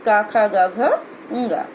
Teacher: इनका उच्चारण कंठ से होता है। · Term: कवर्ग